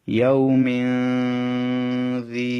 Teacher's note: ইয়া ওয়াও জবর ইয়াও, মিম 2 জের মিন, ইয়াও মিন, জাল ইয়া জের দি। তানবিনের পরে জাল, লক্ষ্য করুন, জাল ইখফার হরফ, সেজন্য তানবিনটা গুণনা করতে হবে। ইয়াও মিন জি, যেটা বাম পাশে ইয়া সাকিন একালে টানতে হবে।